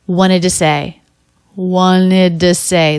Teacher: This first T totally dropped. That's pretty common in this word because it comes after an N.